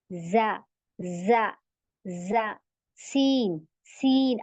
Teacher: जबान हमारी नीचे ही है वो ऊपर नहीं उठ रही है यानी ऊपर के दांतों पे नहीं लग रही नीचे के दांतों पे लग रही है